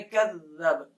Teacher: ذال کی جگہ پہ خیال کیجئے گا کہ زا کی آواز نہ آئے. یہ سخت ہوگا اس لیے ذرا احتیاط سے پڑھنا کہ سختی کی وجہ سے زا نہ ادا ہو جائے.